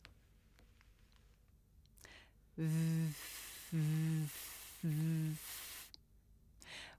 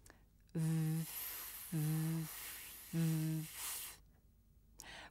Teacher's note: When I make the voiced sound v, it vibrates in my ears and my throat.